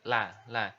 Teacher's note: La ini diucapkan dengan menyentuhkan ujung lidah kita, disentuhkan dengan langit-langit di depan pengucapan huruf roh. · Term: huruf lam